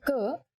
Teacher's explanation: when you say ker there is no forceful expulsion of air